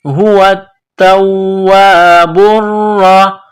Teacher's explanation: هو التواب پیش بر را زبر را، هو التواب را. را کے اوپر تشدید ہے تو را میں سختی کرنی ہے